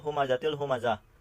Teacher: tanwin bertemu dengan salah satu huruf idgham bila guna, yaitu la, dan dibaca tidak berdengung